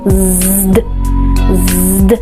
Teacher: para producir el sonido D, rápidamente subimos la punta de la lengua, la primera línea de la lengua, al alvéolo o a los dientes superiores